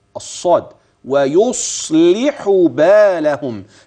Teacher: فان الصاد ساكنه نعم مفخمه نعم ولها درجتها في التفخيم